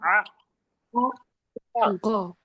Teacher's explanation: आइन हलक के दरमियानी हिस्से से निकलता है